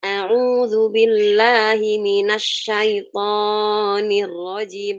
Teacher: salahnya di mana di thnya karena dia kepanjangan enggak satu alif